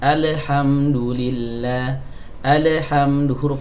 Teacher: lam bukan huruf Qalqalah ya jadi dia jangan di pantulkan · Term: huruf lam